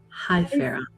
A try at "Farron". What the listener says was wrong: Hi, Farron. The emphasis is on the the second syllable.